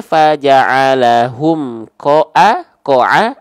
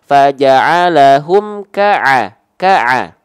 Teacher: kalau huruf Kaf mah bang vokal a dong bukan ko dong tapi ka dong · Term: huruf yang tipis